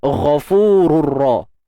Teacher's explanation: Baik, untuk ghain kita kena tebalkan. Huruf ghain isti'la kan, kena tebal, angkat pangkal lidah kita. Kemudian fu kita baca mat asli dua harakat.